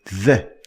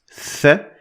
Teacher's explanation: you're going to feel a vibration of your vocal cords while you pronounce the letter the, or the sound the. In contrast, if you try to pronounce th, which is a voiceless sound, you will notice that there is no vibration whatsoever because it is a voiceless sound. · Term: voiced sound